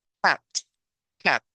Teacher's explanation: no es A como en el español, sino pareciera a veces como una mezcla entre una A y una E, ¿verdad? Por eso está este símbolo aquí extraño que nosotros tal vez no habíamos visto antes, este de aquí en medio, porque ese símbolo y esa pronunciación, ninguna de las palabras del español tiene. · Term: el sonido corto de la A